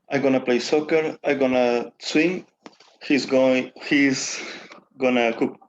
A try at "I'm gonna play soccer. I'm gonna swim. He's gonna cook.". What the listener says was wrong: It's good, but faster.